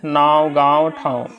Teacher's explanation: लेकिन आप ऐसे पता कर सकते हैं, जब आवाज़ करते हैं तो वहाँ नाक से आपको झंझनाहट की आवाज़ आएगी, अर्थात उच्चारण यहाँ पे हम लोग नाक से कर रहे हैं। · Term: अनुनासिक